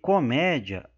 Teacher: a sílaba tônica tá aqui ó no mé porque é a sílaba acentuada